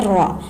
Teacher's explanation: जबान की नोक और मुकाबिल के तालू से अदा होता है